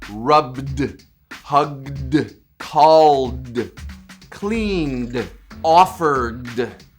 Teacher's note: the d is actually voiced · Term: the d sound